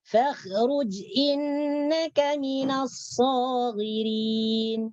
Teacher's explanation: Ra-nya di sini dibaca tebal. Kenapa ra dibaca tebal? Karena ra berharkat dhammah.